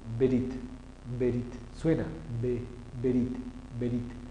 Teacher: El sonido de la E es muy corto, suena, pero es absorbido por la consonante B.